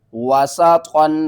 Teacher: زبر وا، سین زبر سا، واسا، طا دو زبر طن، واسطن، طا کو موٹا کر کے پڑھنا ہے ، واسطن، سین کو سیٹی کی آواز کے ساتھ، طا کو